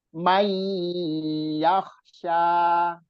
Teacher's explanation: mainya ditekan sampai 2 harokat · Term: bi gunnah